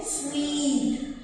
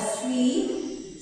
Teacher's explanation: So when we say sweet, this vowel is stretched. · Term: long vowel